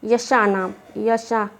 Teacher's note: य और श हमारा तालु से बोला जाएगा